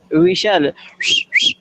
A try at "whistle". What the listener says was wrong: Not we shall. We sell. Sa. I have noticed there is S and sa sound. You need to practice it. In S, there are two sound in S. S and SH. There are two sounds.